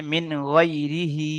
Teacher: খাড়া জেরকে একালি পরিমাণ, টান দিয়ে পড়তে হয়